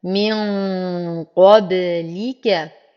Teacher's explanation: لدي نون ساكنة والحرف الذي بعدها القاف وهو حرف مفخم من حروف الإخفاء فيحتاج إلى غنة مفخمة كاملة